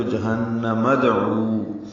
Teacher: دال ساکن پہ قلقلہ ہوگا · جہنم ہاف سے حلق سے نکالیں گے، نون مشدد پہ غنہ ہے